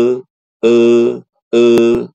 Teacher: Cara menaikkan pangkal lidah itu adalah dengan mengucapkan huruf E. Kalau kita mengucapkan huruf E, e, e, itu pangkal lidah kita naik